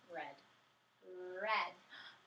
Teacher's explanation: i love how your tongue tip was up